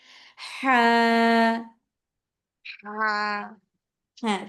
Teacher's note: হাটা হচ্ছে আপুরা গলার মধ্যে একটা চাপ সৃষ্টি করবেন। চাপ সৃষ্টি করে বাতাস সহকারে বের করবেন।